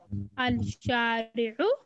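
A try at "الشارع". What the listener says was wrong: Al-Shari'u. Lam is silent.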